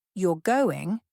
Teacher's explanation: a rising intonation at the end of the sentence is a question